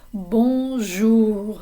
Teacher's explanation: the o n sounds like a vowel sound coming through your nose almost like you have a cold